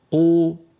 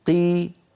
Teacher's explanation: نجد بأن المكسور كمية الهواء التي تملأ الفم أقل